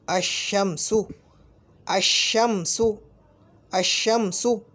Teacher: अल का जो लाम जो कि उस हर्फ से बदल चुका है, उस तब्दील शुदा हर्फ को इदगाम कर दिया